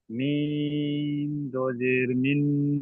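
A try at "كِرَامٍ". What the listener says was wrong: দুজের তো হবে না, কারণ তানবিনের পরে দেখেন বা এসেছে। তাই তানবিনটা কি হবে? তানবিনের পরিবর্তে একটা মিম উচ্চারণ হবে। মিম মিম জের মিম।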